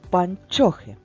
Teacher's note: звук ч який він твердий приголосний